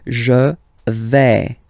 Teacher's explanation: when you combine this A-I, you get the sound E, really open